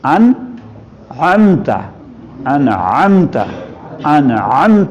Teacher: اچھا سارا زور انت پہ لگائیں, ان پہ نہیں.